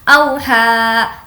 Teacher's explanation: واو جس پر جزم ہے اور اس سے پہلے زبر ہے تو اس کو نہیں کھینچیں گے۔ اوحا، ہا کھڑا زبر ہا، اوحا لہا، بِأَنَّ رَبَّكَ اوحا لہا، یومئذ، یو واولین ہے، یومئذ۔